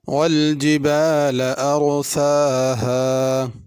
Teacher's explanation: اس میں را کو پر پڑھنا ہے، ارسا ارسا باریک کر کے نہیں پڑھنا، اور سین کو کھینچنا ہے، اس کے اوپر کھڑی زبر ہے، الف کی طرح ہی اس کو پڑھنا ہے۔